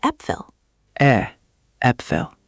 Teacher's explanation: The first is e. Think of the e sound in the English word bed, that open e.